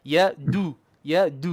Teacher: with dhamma, we must make our lips round or circle or even semicircle, but circle is better.